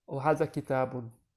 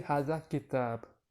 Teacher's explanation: when you're speaking Arabic, you don't need to pronounce the ending vowels